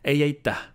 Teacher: So you really have to pronounce the H at the end